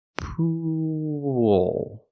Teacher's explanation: I'm using the long oo sound like food and moon. Poo. Then I'm linking to the dark L, where I tense my tongue.